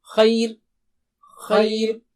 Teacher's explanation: خی تو ای کہنے میں زبان باریک ہو گئی تو را کو بھی باریک کر دیں